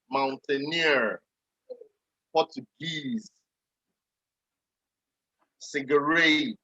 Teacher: all these words, they have their stress in the last syllable